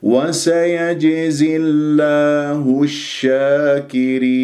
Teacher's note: هكذا خطأ لأنه اللام ليست رخوة، اللام من أحرف البينية. الصحيح وسيجزي الله الشاكرين، الشاكرين اللام شمسية لأنه جاء بعد حرف مشدد والشين تفشي.